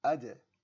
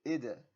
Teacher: When I did the bounce, I did not give it an extra fatha sound, so be very careful. You want to keep that bounce very, very small.